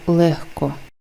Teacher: дзвінкий г стає глухим х тому що далі йде глухий к який впливає на вимову попереднього звуку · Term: асиміляція за глухістю